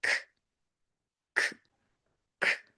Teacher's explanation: you have to teach that sound as k, k, k, slight air coming out of your mouth